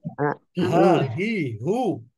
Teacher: কণ্ঠনালীর শুরু থেকে অনেকটা বুকের মধ্য থেকে উচ্চারিত হয়। যেমন আমরা কেউ মারা গেলে আফসোস করি, হাই রে, হাই রে, এই যে আফসোস করি, আফসোসের জায়গা থেকে হা উচ্চারিত হয়।